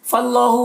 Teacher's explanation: अल्लाह को पुर पढ़ेंगे, खड़ा ज़बर है, एक अलिफ के बराबर खींचेंगे